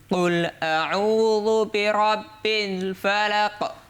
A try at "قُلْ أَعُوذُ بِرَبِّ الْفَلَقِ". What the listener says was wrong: না, ভালো হলো না। রব্বিল পিল শোনা যায় কেন?